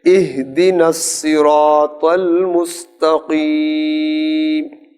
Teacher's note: اب یہ جو ہا ہے یہ حلق کی نہیں ہے، یہ سینے سے آئے گی